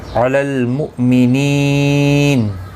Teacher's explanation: حمزہ ساکن کو جھٹکے کے ساتھ پڑھا جائے گا